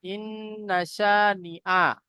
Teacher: ইন্না শানিআকা হুয়াল আবতার, হামজা নুন জের ইন, এখানেও কি নুন মুসাদ্দাদ গুন্না ওয়াজিব, একালে পরিমাণ গুন্না করব।